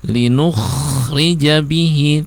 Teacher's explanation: kho-nya pertama harus jelas, kemudian sukunnya dialirkan dikit ya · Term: Kho sukunnya